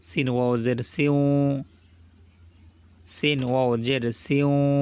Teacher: মুখটা গোল হয়ে যাবে ওয়াও যখন বলবো আমরা